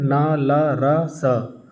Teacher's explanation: दांत के साथ साथ हमारी जीभ जो है मसूड़े में भी लगती है, इसीलिए इन्हें हम वत्सर्य कहते हैं।